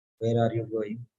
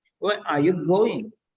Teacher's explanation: So second one is a flat tone. The first one is rising and falling tone.